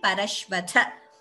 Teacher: Parashvatha, tha is mahaprana, please note pronunciation